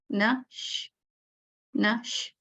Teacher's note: श में आपको देखें आवाज थोड़ी लंबी हो गई